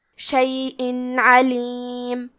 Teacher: کلمت شیئن کے آخری میں حمزہ کے نیچے تنوین زیر ہے، پھر حرف العین ہے کلمت علیم، عین حروف الاظہار میں سے ہے تو ہم تنوین کو ظاہر کریں گے اور بغیر غنہ سے یہ حکم کو ادا کریں گے۔ شیئن علیم، کلمت علیم میں حرف العین کی ادائیگی حلق کے درمیان والی حصے سے ہے